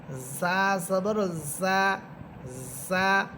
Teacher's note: জা এর মাখরাজ হচ্ছে জিহ্বার আগা সামনের নিচের দুই দাঁতের আগার সাথে লাগবে